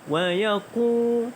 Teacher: Hukum tajwid di sini adalah waw dibaca dengan panjang 2 harakat kerana mad asli huruf waw. Wa yaqu baca dengan panjang 2 harakat.